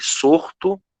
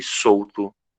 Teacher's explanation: Então nós trocamos o fonema U por um fonema R.